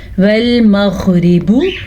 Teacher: را باریک پڑھیں گے، را کے نیچے زیر ہے